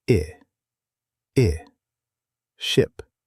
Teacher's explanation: For the short I, as in ship, your mouth is relaxed. It's quick.